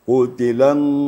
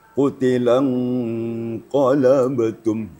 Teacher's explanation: Yaitu menyembunyikan atau menyamarkan bunyi nun mati atau tanwin apabila bertemu dengan salah satu huruf yang 15, yaitu huruf qaf di sini. Jadi caranya harus ada bunyi eng-nya. Kemudian eng-nya tebal sedikit kerana disambut oleh huruf qaf. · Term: ikhfa hakiki